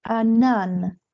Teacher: the stress is at the end, in its regular position.